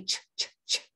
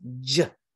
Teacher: Oh, your voice isn't vibrating. Those vocal cords don't vibrate. Now say ch with your voice box on, j.